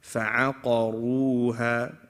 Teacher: Ain and fa are both light letters. Qaf is heavy. Ra is heavy.